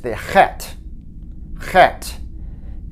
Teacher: it's kind of an h but it has a more guttural sound to it so you begin to make the sound back in the throat